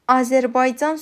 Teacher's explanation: Azərbaycan sözündə A qalın, ə incədir.